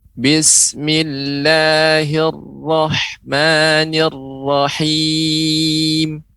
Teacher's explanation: Huruf ra-nya lebih ditebalkan lagi, kemudian tidak ada banyak getaran.